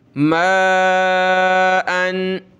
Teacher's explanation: تنوین ہے تو ناک میں آواز پیدا کریں گے